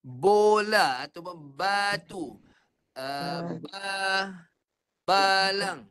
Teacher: Tapi kalau tekan kuat-kuat, bibir melekat. Antara bibir atas dan bibir bawah tu melekat kuat, dia jadi huruf B.